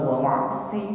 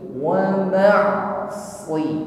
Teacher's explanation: Jadi kalau membedakan ketika mengucapkan shad kasrah dan sin kasrah, bukan sekedar wa ma'siyati, bukan si tipis ringan, ya, sebagaimana huruf si, ya. Huruf shad lebih berat pengucapannya dan bunyi yang keluar ini menebal.